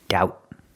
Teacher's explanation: the B in doubt is silent. Don't pronounce that B. There's no daub.